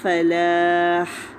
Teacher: فا کا مخرج دانت نیچے والے ہونٹ پہ لگیں، اور پھر فلاح ہا پہ وقف کر رہے ہیں تو ہا کے مخرج پہ جا کے وقف کرنا ہے۔